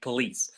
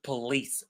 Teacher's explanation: the second syllable lease is the one that is stressed in the word police